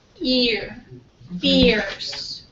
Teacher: So it's going from very high to mid. · we're moving from that short I sound to the schwa sound. So it's going to be what we call a centering movement.